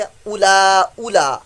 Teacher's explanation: یہ واؤ کو نہیں پڑھا جائے گا، لکھنے میں ہے پڑھنے میں نہیں ہے